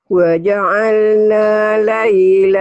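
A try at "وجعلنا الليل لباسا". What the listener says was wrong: Wa ja'alna, matobinya nggak jadi panjang karena ketemu alif lam. Wa ja'alnal.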